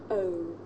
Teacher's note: a double vowel sound the shape the mouth makes changes from the beginning of the sound to the end